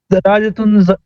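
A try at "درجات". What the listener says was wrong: تن نہیں آئے گا، جو مضاف ہوتا ہے نا اس پر تنوین نہیں آئے گی. پہلی قانون یہ ہے کہ اس پر تنوین نہیں آئے گی.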